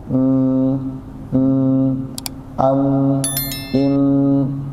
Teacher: adalah gunah jadi gunah enggak akan sempurna kalau enggak ditahan karena dia memiliki dua makhraj tadi bibir dan hidung kalau kita ngucapin mim masih gini